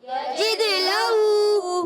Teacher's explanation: دال میں قلقلہ، دال حرف قلقلہ میں سے قلقلہ ہوگا، آواز لوٹ کر آئے گی. لہو، لام پر زبر ہے، ہا پر الٹا پیش ہے، لام کی زبر کو نہیں کھینچنا، ہا الٹا پیش، ہو، ایک الف کھینچ کر ادا کریں گے.